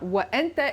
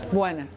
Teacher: when that word is in a larger stream and is said connected to words before it, the hamza just disappears entirely. And so you don't get, it's not wa anta, it's and I, wana.